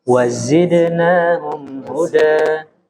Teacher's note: Zai itu ada sofirnya. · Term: Huruf zai